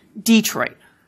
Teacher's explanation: So, for example, the city name near where I live, Detroit, of course, starts as Détroit, becomes Detroit, and for a good number of speakers in Michigan, the stress has now moved to the first syllable